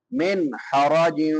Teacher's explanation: نون ساکن کے بعد حروف حلقی میں سے ہا ہے تو یہاں پہ اظہار ہوگا ، من حرج، ہا حلق سے ادا ہوگی، حلق کے درمیان